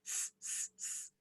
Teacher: This sound is an unvoiced sound. So if you hold your throat and you say, s, s, s, you should not feel vibration.